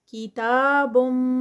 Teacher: تا پہ جو ہے وہ کھڑی زبر ہے تو یہ بھی 2 کاؤنٹس کا